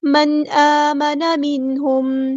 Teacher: नून साकिन की आवाज़ यहाँ ज़ाहिर करेंगे, इज़हार होगा